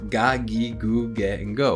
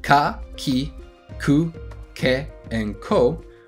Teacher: Ka, ki, ku, ke, and ko are all ga, gi, gu, ge, and go, which is the voiced sound. G is the voiced version of k, similar to v being the voiced version of f.